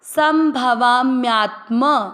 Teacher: भ अक्षर पूरा, वा को दीर्घ किया तो भवा। आधे म के साथ या, म्यात्म।